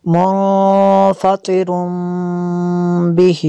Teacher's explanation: آگے اور واو کے اوپر ڈبل پیش ہے، تنوین کے بعد با ہے تو یہاں پہ اقلاب ہوگا، جو تنوین کا نون ساکن ہے اسے میم سے بدل کے پڑھیں گے۔ منفطر بہ، یہاں پہ تو وقف مطلق کی شارٹ فارم ہے، یہاں پہ اگر وقف کریں گے تو بہ پڑھیں گے اس کو۔